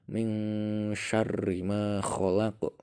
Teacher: Contoh, min syarri ma khalaq. Jadi nun matinya dibaca samar, seakan-akan ada suara eng. Seakan-akan loh ya, bukan nunnya bukan dibaca ming, bukan, tapi min syarri ma khalaq. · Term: ikhfa